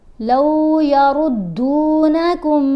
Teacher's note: را کو ہم موٹا پڑھیں گے اور دال کے ساتھ ہارڈلی ملائیں گے، مضبوطی سے ملائیں گے